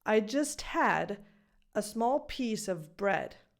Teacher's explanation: But the O is not fully pronounced, as if I'm just pronouncing this word of. I'm not saying ah. That's not the vowel sound I'm pronouncing. I'm just pronouncing a schwa sound.